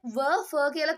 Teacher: ෆ කියලා බලද්දී දත් වලිනුත් කියවෙනවා. තොල් වලින් විතරක් කියන්න බෑ. ඒ නිසා තමයි ඒක දන්ත ඕෂ්ඨජ කියලා මේ දෙකට දැම්මේ. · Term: දන්තෝෂ්ඨජ